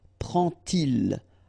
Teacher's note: And so this little d here is in red just to show you that you won't pronounce it like d to make the liaison, but you will pronounce it like t. And so you will get prend-il, okay?